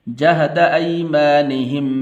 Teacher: یہ یا حروف لین میں سے ہے تو اسے لمبا نہیں کرنا